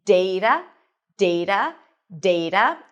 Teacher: I am using the general American pronunciation, so you'll notice that my T sounds a little bit like a D.